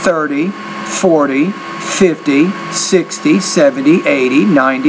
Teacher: the stress is on the first not the second syllable